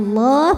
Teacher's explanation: dibunyikan secara tafkhim sebab huruf sebelumnya barisnya fathah, maka dibacanya tebal, bunyinya Allah, pangkal lidah naikkan.